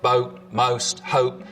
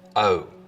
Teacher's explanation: So the vowel sound in boat, most, hope, starts with the tongue further forwards in the mouth. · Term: goat fronting